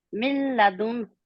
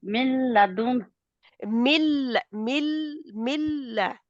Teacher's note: من لدنه نہیں، نون کو نہ بولیں آپ بیچ میں. ملا ملا ڈائریکٹ ملا ہے، من لدن کیونکہ لام اور را کے اوپر ادغام گننے کے بغیر جی ہوتا ہے نا.